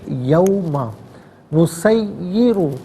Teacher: یوم اسے یوم نہیں پڑھیں گے، یوم نسیر، را پر پیش ہے، را کو پر کر کے پڑھا جائے گا